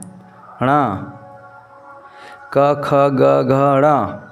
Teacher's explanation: ये सारे के सारे हमारे कंठ से आते हैं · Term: क वर्ग